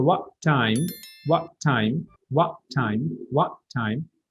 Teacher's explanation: So this T and T, one T goes out and one T isn't pronounced.